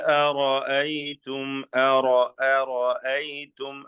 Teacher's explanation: റായി ലേശം കൂടി തടിപ്പിച്ച് പറഞ്ഞോളൂ, തഫ്ഖീം ചെയ്ത്